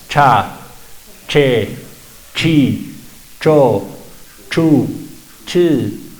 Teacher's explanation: este sonido corta el aire antes de la vocal entonces sale golpeado